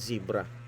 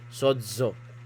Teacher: When zeta begins a word, it is pronounced as Z, as in zebra. Otherwise, it is pronounced as DJ, as in suds.